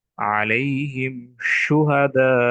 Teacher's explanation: শিন মুখের মধ্যে বিস্তার হয়ে গিয়েছে · সেটা হচ্ছে একটি মাত্র হরফ, শিন। শিনের উচ্চারণ যখন আমরা করব তখন আমাদের পুরো মুখে বাতাস জারি হয়ে যাবে, অর্থাৎ পুরো মুখ বাতাসে ভর্তি হয়ে যাবে। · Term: তাফাস্সি